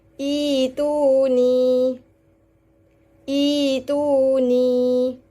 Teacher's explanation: huruf berikutnya hamzah ditukar kepada huruf ya dan dibaca panjang dua harakat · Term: ibdal